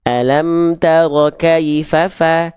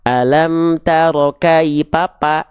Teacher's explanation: Jangan sampai huruf fa ini dilafalkan berubah menjadi huruf P.